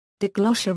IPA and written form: daɪˈɡlɒsiə (diglossia)